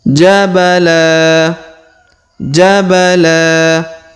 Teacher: dua harakat karena di depannya terdapat Alif khalafa kemudian jabala jabala huruf la kita panjangkan dua harakat karena di depan huruf la terdapat Alif